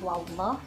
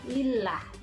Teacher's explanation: Beda ketika dengan lafaz Allah yang didahului fathah wallah. Nah, yang ini didahului kasroh lillah, dia ringan.